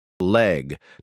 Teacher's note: tongue tip to alveolar ridge, sides of tongue drop, air flows around the sides.